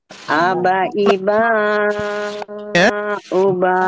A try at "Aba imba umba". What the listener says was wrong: Ya, sebelumnya ada mim sukun, maka kita harus dengungkan ya, kita samarkan dan dengungkan. Aba imba umba. Uba.